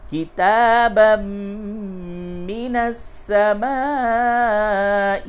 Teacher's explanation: تنوین کے بعد میم ہے، ادغام مع الغنہ ہوگا